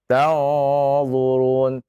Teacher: Ya dibaca dengan tebal karena di depannya huruf dha ya.